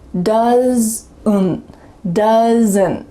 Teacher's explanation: Do you hear that added schwa sound in my throat?